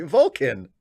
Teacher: It's a schwa in the second syllable